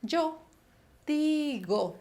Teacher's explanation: Y el otro verbo que quiero que se aprendan es el verbo decir, que también es un verbo que es irregular en la primera persona y también es un verbo de irregularidad vocálica. Pero ya no va a diptongar, sino va a cerrar la vocal. Esa E, penúltima, se va a transformar en I.